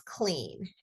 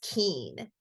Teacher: the child is reducing the cluster they're dropping off one of those two neighboring consonants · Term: cluster reduction